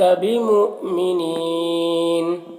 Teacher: حمزہ ساکنہ واو کی شکل میں جھٹکا لگے گا، اور وقفی کی صورت میں مد عارض وقفی ہوگا، تو اس طرح سے پڑھیں گے۔